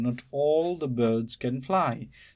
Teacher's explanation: Not is a stressed. All can be also stressed. Doesn't matter. The is not stressed. Birds is stressed. Can is not stressed. Fly is stressed.